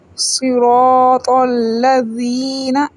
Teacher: را کو موٹا پڑھیں گے، الف مدہ ہے، 1 سیکنڈ لمبا کریں گے